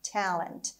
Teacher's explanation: And the stress is on the first syllable.